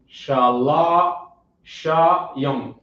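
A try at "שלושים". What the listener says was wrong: Put it together. Shalashim.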